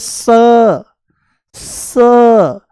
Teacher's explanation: ये दंत्य सकार है, दांतों से बोला जाता है